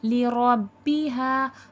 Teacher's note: رو کو پر کر کے موٹا کر کے پڑھا جائے گا